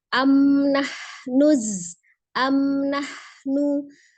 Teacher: mim sukun bertemu dengan nunnya, izhar safawi kembali